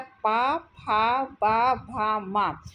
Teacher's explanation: ओष्ठ, इन वर्णों के उच्चारण में केवल होठों का रोल होता है, ऊपर और नीचे के होठ आपस में मिलते हैं तब उच्चारण होता है